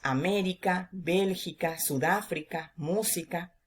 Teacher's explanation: Estas son las que llevan la intensidad de la voz en la antepenúltima sílaba. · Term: palabras esdrújulas